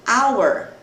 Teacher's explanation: Eu não tenho a pronúncia do H aqui como em palavras como house, casa, né? Então aqui ele é mudo.